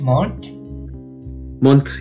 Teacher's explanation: a lot of Irish people, they pronounce the TH as an aspirated T